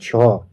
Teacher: छ जो है तालाव्य, महाप्राण और अघोष है।